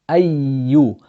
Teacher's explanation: the ya has a shadda on it, and therefore we need to pronounce 2 yas